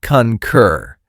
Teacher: Two syllables with stress on the second. The first syllable has that short u sound like in cup.